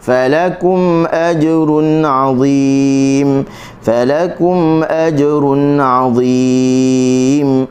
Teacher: Fa kita jangan tekan di lam, tekan di kaf.